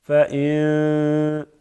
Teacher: اخفا کرتے ہیں، یعنی آواز کو تھوڑی سی ناک کی طرف کے لے کے جاتے ہیں